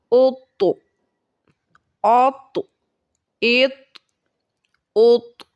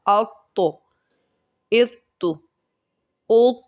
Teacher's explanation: ان حروف کے ادا کرتے وقت مخرج میں جنبش سی ہو، جس کی وجہ سے آواز لوٹتی ہوئی نکلے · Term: قلقلہ